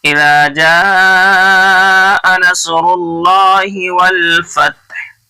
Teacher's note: वल फतह नसरुल्लाहि है, नसरुल्लाह है नहीं पढ़ना है, मारूफ पढ़ना है. नसरुल्लाहि ही को जल्दी पढ़ना, खिंचना नहीं है. ऐसे नहीं इज़ा जाअ नसरुल्लाहि वल फतह, ये गलत हो जाएगा.